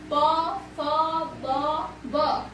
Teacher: यानी कि जो होठों से जो ध्वनि उत्पन्न होता है तो उसे हम कहते हैं ओष्ठ्य व्यंजन